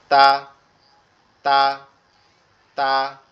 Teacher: জিহ্বার আগাটা সামনের দুই দাঁতের গোড়ার সঙ্গে লাগবে, লেগে উচ্চারিত হবে